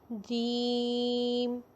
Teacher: مخرج میں آواز قوت اور سختی کے ساتھ ٹھہرتی ہے۔ جیسے جب ہم جیم کو پڑھیں گے تو آواز مضبوطی کے ساتھ لگے گی، جیم۔ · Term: صفت شدت